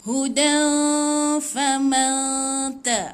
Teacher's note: jangan sebut tepat pada nun, tahan 2 harakat, bersedia sebut huruf yang selepas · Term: ikhfa hakiki